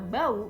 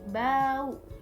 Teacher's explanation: au dalam kata bau itu lebih dari a ke u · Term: diftong